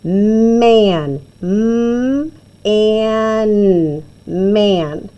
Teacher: We use this whiny A because he doesn't say ah like the regular letter short vowel sound for A. He says eh because he's next to his friend N, and he also can say that when he's next to his friend M.